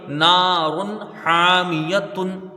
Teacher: را کے اوپر دو پیش کی تنوین ہے اور تنوین کے بعد حروف حلقی کا ہا ہے، یہاں اظہار ہلکی ہوگا، یعنی تنوین کو ظاہر کر کے بغیر غنہ کے جلدی پڑھا جائے گا